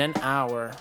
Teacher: Hour is a noun that starts with a consonant. The consonant is H, but because it's silent, we do not hear the H all the time, and we are forced to attach the word and to it.